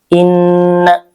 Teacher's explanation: nun sukun yang bertasydid dan hukumnya adalah gunah. Gunah ya ditahan ditahan 2 t empat ketukan. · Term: gunnah